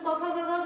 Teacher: ठीक है, इसके अलावा भी होता है कंठ का उच्चारण स्थान, क ख ग घ का उच्चारण स्थान यानी क वर्ग का उच्चारण स्थान कंठ